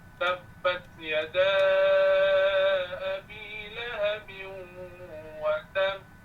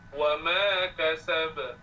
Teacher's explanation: Dia ada tab, ditahan sekejap, ditekan sedikit, kemudian bunyi lantunannya. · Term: qalqalah akbar